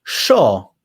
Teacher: So if you're from Argentina, that Y becomes an SH. Sho. And it's very strong.